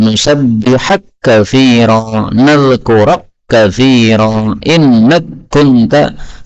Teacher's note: kaf ketemu kaf boleh idgham, nusabbihak katsira, nadhkurak katsira, innak kunta.